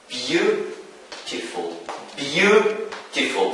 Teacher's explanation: So the stress falls on the first syllable.